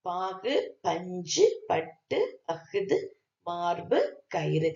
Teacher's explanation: சொல்லின் இறுதியில் வல்லினமைகள் மீது ஏறி வருகின்ற உகரம் தன்னுடைய ஒரு மாத்திரை அளவிலிருந்து குறைந்த அரை மாத்திரை அளவில் ஒலிப்பதுதான் உகரம். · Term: குற்றியலுகரம்